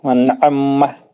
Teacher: عین کو سختی کے ساتھ دو بار پڑھیں گے